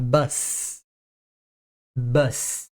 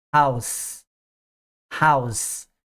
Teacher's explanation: essas palavras no singular elas TM som de s no final um som não vozeado